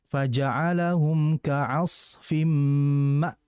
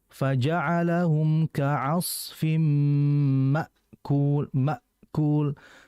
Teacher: Hamzah ini ya sifatnya syiddah, artinya kita harus keras mengucapkannya, nggak boleh ngalir. Jadi kayak apa kalau bahasa kita itu rem mendadak. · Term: hamzah mati